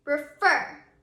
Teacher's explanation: When you say that word, you can hear that our accented syllable is our last syllable in the word refer.